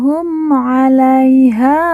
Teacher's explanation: kita matikan karena wakaf atau berhenti kita lanjut humumaiha perhatikan umaiha ha kita baca panjang dua harakat karena di depannya terdapat huruf alif yang merupakan tanda baca panjang dua